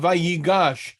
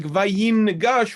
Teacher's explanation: the noon assimilates into the following consonant when immediately followed by one